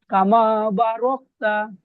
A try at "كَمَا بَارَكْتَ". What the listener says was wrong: ভাই, বা একটু চাপ হবে। কামা বারাকতা